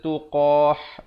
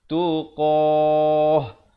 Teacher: Kalau waqaf ta marbutah ni dia ditukarkan kepada ha. Ha simpul bukan ha pedas. Jangan pula kita baca tuqah, itu tak betul.